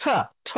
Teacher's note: ঠ এটা হচ্ছে এই দন্ত, মানে দাঁত যে আছে সামনের যে উপরে দাঁত, ওখানে বাড়ি খেয়ে এটা বের হয়